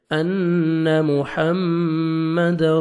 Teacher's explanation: نون پہ جب شد آتا ہے، میم پہ شد تو غنہ کرتے ہیں، نوز میں ساؤنڈ لے کے جاتے ہیں